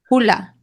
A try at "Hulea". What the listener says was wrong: So there is an e there as well.